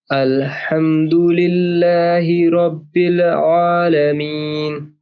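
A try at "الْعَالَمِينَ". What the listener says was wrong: आ आ ठीक सीधा स्ट्रेट होगा, नहीं दूसरा आपका लाम पुर हो रहा है,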